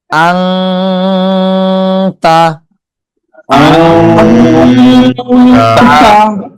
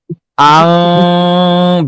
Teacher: ইকফা গুণনাটা হচ্ছে নাকের মধ্যে নিয়ে বেশি সময় ধরে রাখতে হয়, গোপন করতে হয়। পড়াটা যেরকম আছে তার থেকে কিছুটা কম উচ্চারণ হবে, কিন্তু গুণনাটা বেশি হবে।